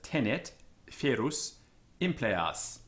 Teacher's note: an open E as in sped, and it's short